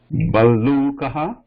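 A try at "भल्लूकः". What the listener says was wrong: Yes. There's a double la.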